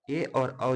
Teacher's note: ए और औ जो है कंठ यानी कि कंठ और तालु के स्थान से बोला जाएगा